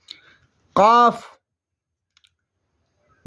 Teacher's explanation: قاف جڑ زبان تالو سے مل کر قاف ادا ہوتا ہے